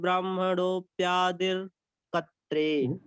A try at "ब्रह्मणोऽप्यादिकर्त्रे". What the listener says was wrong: प्यादिर कत्रे नहीं, प्यादि कर्त्रे। कर्त्रे रा जो है वो आदिर दर दा के बाद नहीं, वो का के बाद।